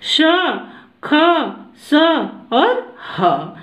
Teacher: जिन वर्णों का उच्चारण करते समय वायु मुख से रगड़ खाकर निकलती है उन्हें ऊष्म व्यंजन कहते हैं, या जिन वर्णों का उच्चारण करते समय मुख से गर्म श्वास निकलती है उसे ऊष्म व्यंजन कहते हैं।